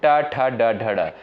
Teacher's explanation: इनका उच्चारण स्थान जो है मूर्धा से होता है